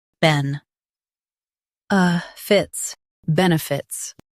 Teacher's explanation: Stress ben and keep light. Fits is quick.